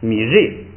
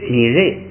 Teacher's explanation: 就变。有很多呢，那个就是就按读书音读，不按那个口语读。因为咱们重点是在这个读经，不是在说这个口语。但是呢，咱们也知道它那个规矩就行了。这是拧托，然后是月蛙，云丹，吞蒙，洗巴，缺破鱼，这是他的家乡，缺破鱼。爱呢，我的家，米瑞，这个为什么后边这个瑞要读4声呢？因为它这个一个是这个后加字卡也要把调摁下来，再后加字撒也要把调摁下来。这个ri本来是2声，这个把调一摁下来变成那个3声，就变成ri。ri呢，在这个第2音节，第2音节不准升， 第2音节绝对不准升，所以它这个升降调也不准有，升降调就得变成整个变成降调 ，就把前边的那个升调就去掉了。所以呢，这个整个这个3声呢，在第2音节就变成了4声，就跟1声似的，就变成了去声，所以是米瑞。米瑞，哎，就是在第2音节不准升，叫前不降后不升，所以呢，